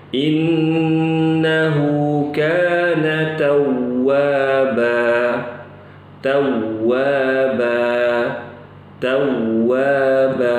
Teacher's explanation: tawwaba ini kalau waqaf dibacanya 2 harokat